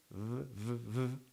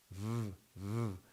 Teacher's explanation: It says also labiodental because it's between the teeth and the lip. Labio means lip. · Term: voiced labiodental fricative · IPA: /v/